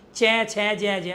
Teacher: जब आप चै ज का उच्चारण करें तो मुख के अंदर के फंक्शन को समझो। चै ज आपकी जीभ बार-बार तालु को स्पर्श कर रही है। इसी वजह से तालव्य वर्ण कहलाते हैं।